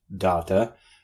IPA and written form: ˈdɑtə (data)